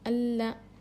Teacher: لام لام زبان کے کنارے کو سائڈ کے دانتوں کو لگانے سے ادا ہوتا ہے. لام کو ہم باریک پڑھیں گے. لام پر تشدید ہے، اس کو 2 مرتبہ پڑھیں گے. · لام پر تشدید ہے، اس کو 2 مرتبہ پڑھیں گے. 1 بار پچھلے والے حرف سے ملا کر 1 بار خود اس سے.